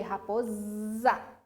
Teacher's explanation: o S não tem som de S, ele tem o som de Z